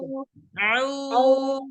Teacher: Keadaan doma itu pangkal lidah sedikit naik gitu. Tapi dari tengah lidah ke depan, turun dia ke bawah. Jadi di belakang gigi seri yang bawah.